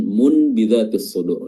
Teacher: Iqlab artinya membalikkan, ya. Yang tadinya dibaca nun kita balikkan dibaca mim untuk menyesuaikan makhraj dari ba tersebut untuk memudahkan, ya.